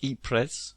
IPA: ˈiːprəs